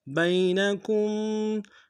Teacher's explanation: با کو یا کے سامنے لائیں گے، یا لین بغیر کھینچے پڑیں گے